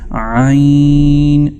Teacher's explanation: عین اس کی جو آواز ہے یہ حلق کی گہرائیوں سے یعنی اقصائے حلق سے آپ نے اس کو ادا کرنا ہے